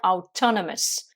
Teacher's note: on accentue sur la deuxième syllabe